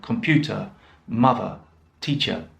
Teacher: it's the schwa sound so ah very short sound like in computer mother teacher it's that last sound it's very short